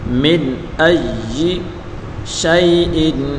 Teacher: اس نون کو ظاہر کر کے پڑھیں گے، یعنی گنہ نہیں کریں گے